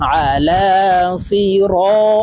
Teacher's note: আলা সদ জের সি র আলিফ জবর র জবরের বাম পাশে খালি আলিফ মদের হরফ তো এই র কে এক আলিফ টেনে পড়বো